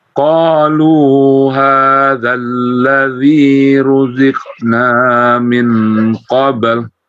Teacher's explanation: Qalu, lu-nya panjang 2 harokat.